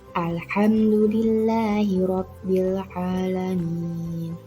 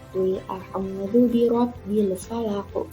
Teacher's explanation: lam ta'rif tadi bertemu dengan huruf Qamariyah harus dibaca terang. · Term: Idhar Qamariyah